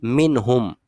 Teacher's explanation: یہاں پر ہم غنہ نہیں کریں گے بلکہ کیا کریں گے؟ فقط اظہار کریں گے